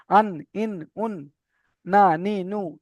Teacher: জীভের আগা এবং সোজা উপরে তালের সঙ্গে লাগিয়ে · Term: নুনের মাখরাজ